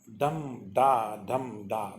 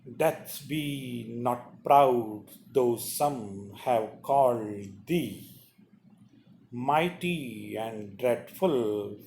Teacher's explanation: The first syllable will be unstressed, then stress. Unstressed, dum, da, dum, da.